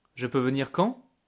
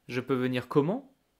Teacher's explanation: Once again, since we use this question word, we know that we are asking a question, but I will still use the tone going up naturally at the end of the sentence